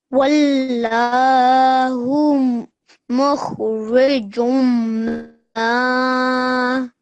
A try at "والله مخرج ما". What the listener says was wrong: Well done, well done.